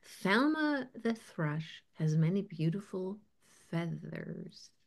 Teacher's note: Thelma the thrush is pronounced with a voiceless th